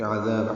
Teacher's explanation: عین وسط حلق سے ادا کریں گے، ذال کو نرمی سے پڑھیں گے